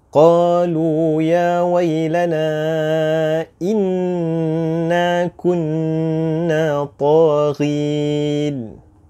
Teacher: Okey, jadi contoh yang terakhir ni kita dapati ada 2 huruf nun musyaddadah di mana kita wajib mendengungkannya dengan kadar 2 harakat sahaja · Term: wajibul gunnah